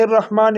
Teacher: را کو موٹا کر کے پڑھیں گے اور میم کو ایک الف کے برابر کھینچیں گے